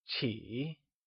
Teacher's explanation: Before moving on, recall that in Mandarin, Q is pronounced with a ch sound. Qi is pronounced using the falling, rising tone